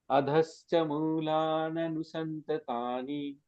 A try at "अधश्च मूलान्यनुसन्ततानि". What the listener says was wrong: अनुसंतानी नहीं है वहां पे, न्यनु न्यनु है। मूलान्यनुसंततानि। हाँ, थोड़ा थोड़ा आ रहा है, न्यनु करना है, न्यनु।